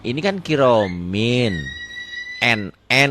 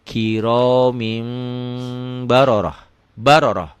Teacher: ujungnya nah dirubah jadi m kiromim tapi agak bindeng dikit